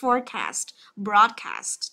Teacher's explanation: Nó giống như từ broadcast này, trọng âm đầu tiên hết nhá